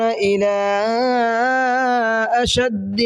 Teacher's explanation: الا کے اندر چھوٹا مد ہے، مد منفصل ہے، اس کو 1 سے 3 الف کے برابر کھینچنا ہے